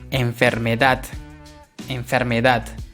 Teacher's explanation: Yo no digo enfermedad, no, sino ya nos damos cuenta que la mayor fuerza de voz es en la última sílaba, es decir, en la sílaba dat